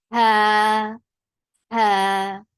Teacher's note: There should be a misty sound before saying fatha, and the fatha is 2 counts long.